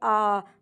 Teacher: और विवृत का मतलब होता है जब पूरा मुख खुला रहे तो उसे विवृत कहते हैं। जैसे आ, तो आ का जब आप उच्चारण करते हैं तो अब मुख जो होता है पूरा खुल जाता है।